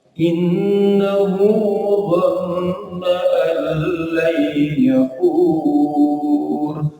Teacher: Inna tadi ghunnah musyaddah, dhanna juga ghunnah musyaddah karena nun bertasdid. Allah ini masuk tapi tidak dengung karena langsung kelam.